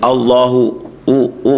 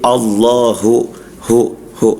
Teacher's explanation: Ketarik jadi Allahu Allahu u ah itu enggak jelas. Harusnya Allahu hu itu makhrajnya ada di pangkal dijelaskan dia.